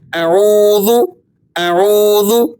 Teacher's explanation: حمزہ زبر ا، عین واو پیش عو، اعو، لال پیش ذو، اعوذ، وقفن، اعوذ۔ واو مدہ کو آپ 2 حرکتوں کے برابر کھینچ کر ادا کر لیں گے